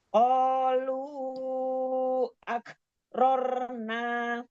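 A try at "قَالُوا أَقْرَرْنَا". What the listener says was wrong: itu bukan kaf, nggak ada hamas, qaf, qalqalah. Qalu aqrarna.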